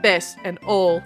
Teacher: they delete the final consonant of some of their words, like best and ol from best and old.